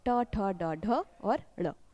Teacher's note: ट वर्ग के सभी व्यंजनों का उच्चारण स्थान क्या होता है मूर्धा या मूर्धन्य होता है